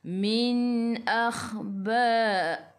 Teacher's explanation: Khu biar ada angin menggelegak.